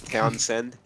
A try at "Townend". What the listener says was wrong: No, it's just Townend. No S.